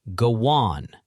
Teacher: And here's something, even the vowel linking, when a word ends in a vowel sound and the next starts with one, a smooth connector slides in. Go on gets a little W in the middle, go on. Your mouth just puts it there automatically.